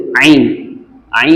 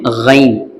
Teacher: ஐன் என்கிற வார்த்தை நம்மளுடைய நடுத்தொண்டையிலிருந்து சவுண்டை வெளியாக்கணும்